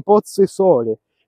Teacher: lo o più Fosco come in pozzo e sole